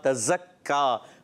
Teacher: इख्फा का गुन्ना होगा, नून साकिन बाद ता आ रहा है उर्फ़ इख्फा में से। तज़क्का, जा की अदायगी सीटी के साथ, तज़क्का। और काफ को बारीक रखना है, काफ मुशद्दद भी है, तशदीद वाला है, ज़रा रुक कर अदा करेंगे।